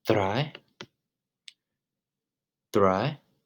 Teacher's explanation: Roll over the DR with your tongue.